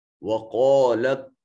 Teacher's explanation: قاف حرف مستعلیہ ہے، صفت استعلاء ہونے کی وجہ سے مفخم پڑھا جائے گا